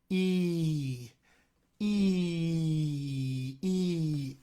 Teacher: my dorsum arched, because we're above the line, arched about as high as it'll go, to about as far as forward as it'll go, and I can have spread lips. Right? And I could send some sound through that shape, and I get something.